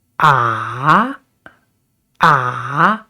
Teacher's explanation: third tone is down and up. So we start with down and then up